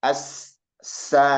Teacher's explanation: Jadi banyak aliran napas ketika kita mengucapkan huruf sin ini. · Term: hamas